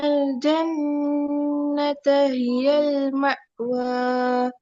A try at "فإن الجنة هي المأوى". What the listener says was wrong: மா என்று தொண்டையில கீழே போனா ஐனுடைய உச்சரிப்பு எதிரும். மா என்று போகுது. உவ கொஞ்சம் நல்லா முன்னுக்கு வச்சுக்கோங்க சவுண்டு. தொண்டையினுடைய ஆரம்ப பகுதி உச்சரிப்பு எடுத்துக்கோங்க.